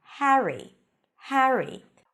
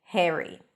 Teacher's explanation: it's more of an a sound before an R Harry Harry in American English when the a appears before an R the a sound becomes e